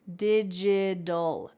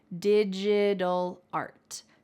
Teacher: That t changes to a d in American English.